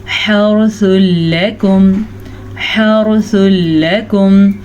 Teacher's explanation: را ساکن سے پیچھے والے لفظ پہ زبر ہے تو را کو ہم پر پڑھیں گے. اور حا کے مخرج کا آپ نے دھیان رکھنا ہے.